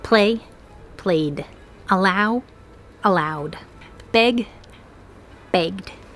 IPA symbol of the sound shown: d